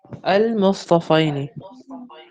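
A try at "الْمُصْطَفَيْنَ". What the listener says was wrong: مصطفینی نہیں ہے مصطفینہ ہے. مصطفینہ ہے یہ مصطفینی نہیں ہے. یہاں پہ فتحہ ہے.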